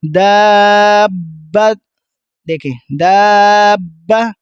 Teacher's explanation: اب جب ہم دا کی ساؤنڈ کو کھینچ رہے ہوں گے، لاسٹ میں جب ہم اس کو ختم کریں گے تو با کی ساؤنڈ کو ملانا ہے، کیونکہ شد ہے، ملا کے پڑھنا ہے